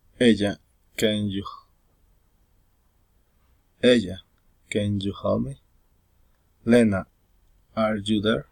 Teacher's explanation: Direct address, rising intonation.